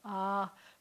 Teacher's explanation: before you can get to ah you have to close down your throat and open it up it's called a glottal stop